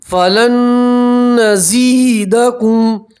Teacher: نون سکین کا ادغام ہے، نون کو آپ نون کے اندر ملا دیں گے اور ایک الف کے برابر گننا کریں گے. نون کو آپ نے نون کے اندر ملا دیا.